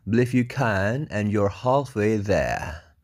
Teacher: R-nya hilang belakang karena there itu kan terakhir suaranya R ya, berarti there gitu doang ya.